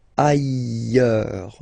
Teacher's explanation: final S not pronounced, and then you've got this y sound